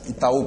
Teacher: a segunda vogal é o U e é a tônica da palavra. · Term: hiato